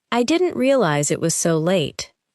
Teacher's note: Try not to pause between realize and it. Let the sounds connect. · Notice how did not contracts, and how the unstressed words become lighter.